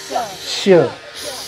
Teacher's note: शहा मृगाचा श चा उच्चार हवा ही जीभ दाताच्या जवळ ठेवायची आहे दाताला टेकवायची नाहीये